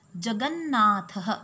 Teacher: The word jagat ends with ta and it is followed by the word beginning with na. Na is the anunasik varnaha, so ta is replaced with na. And we get the sandhi jagannath. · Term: anunasik sandhi